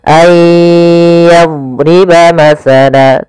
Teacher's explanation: sifat istiqalah, memanjang dotnya ketika dia sukun.